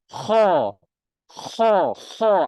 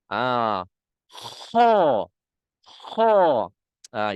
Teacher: menekan suara ke kerongkong atas, kerongkong atas. Menekan suara kita ke kerongkong atas.